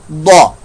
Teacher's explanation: दौद हरूफ मुस्तालिया में से, इसकी आवाज पर मोटी होगी